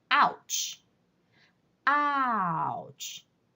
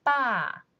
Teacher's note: the pitch goes from the very high to the very low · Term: fourth tone